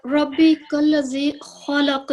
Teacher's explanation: इसमें भी खा जो है वो मुखफ़म है, ला जो है वो सॉफ्ट पढ़ने वाला, और कॉफ जो है ये मुखफ़म होने के साथ साथ कलकला लेटर भी है, और कलकला भी यहाँ पर मुखफ़म तफ़कीम के साथ अदा किया जाएगा जब वक्फ करेंगे जी, वक्त कल की का सूरत।